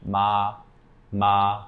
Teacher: what I mean by flat is your pitch shouldn't change when you're using this tone the second tone is rising so you start lower in your · the first tone in Mandarin Chinese is a high flat tone.